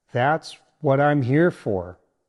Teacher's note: Now, here's how to say it naturally. Stress the word here to show that helping is intentional and meaningful to you.